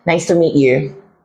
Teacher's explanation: Mabilis, pero may flap, may cut na T.